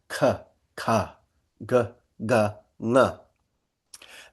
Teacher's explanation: first you have what comes right from the kantya, or what they call the guttural or the velar.